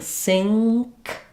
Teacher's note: It's actually an NG and a K sound. So when I'm saying sink, I'm saying an NG sound and then my K sound.